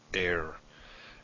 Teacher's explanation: simply silent it's the aleph is like the h in air there's this initial stoppage of breath